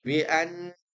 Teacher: nun yang bertasydid, dia punya sifat dengung yang dipanjangkan.